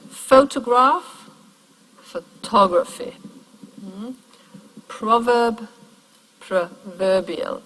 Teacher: the main stress of the word is moved further back so that it lands on the syllable just before the suffix